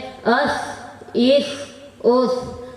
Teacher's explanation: سا، زال، زو کا مخرج زبان کی نوک اور اوپر کے دانتوں کے کنارے سے ادا ہوتا ہے